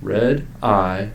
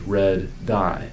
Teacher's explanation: to say red i we use the catenation method but to say red die we need to use the gemination method for stops that is we need to stop and hold the first sound